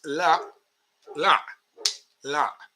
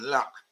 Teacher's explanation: In Arabic, it's la, la, la, with the glottal stop at the end.